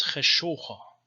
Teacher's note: But in the East it's cheshocha, so there's O instead of U.